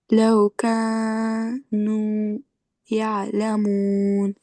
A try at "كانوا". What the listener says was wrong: بھی آپ حروف مدہ کو لمبا کرتے ہیں نا تو صرف 2 کاؤنٹس لمبا کرنا ہے، ٹھیک ہے، کانو نہیں کہنا، کانو کا مطلب ہوتا ہے آپ 3 سے 4 کاؤنٹس لمبا جا رہی ہیں، ٹھیک ہے، کانو بس اتنا لمبا، کانو جتنا 2 دفعہ آپ 2 انگلیوں کو کھولنے میں جتنا ٹائم لگتا ہے نا، اگر آپ نے ایسے انگلیاں بند کی ہوئی